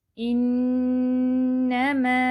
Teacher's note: نون مشدد آ گیا، 3 time hold بھی کریں گے